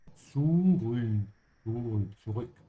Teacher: Be careful with the Z sound. It's a T-S-T-S. And then you have the Ü where your tongue has to stretch forward.